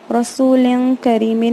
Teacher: لیکن اخفا میں کیا ہوتا ہے کہ تنوین اور نون ساکن کے بعد اخفا لیٹرز آئیں گے تو تنوین اور نون ساکن کو جیسا ہے ویسا ادا نہیں کرتے، بلکہ اس کو ایسے ING ساؤنڈ میں کرتے ہیں اور اس کی آواز کو ناک میں چھپا دیتے ہیں، تو وہ اسٹریسفل نیسل ساؤنڈ یا شدت والی گنا کی آواز جیسے ساؤنڈ کرتی ہے.